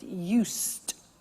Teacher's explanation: I said used with T sound used not use it or use ed used that's very important